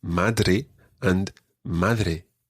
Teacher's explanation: it's not a hard d like the word dad in english it's a softer d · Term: spanish d sound